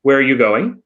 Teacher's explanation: wh questions the intonation tends to go down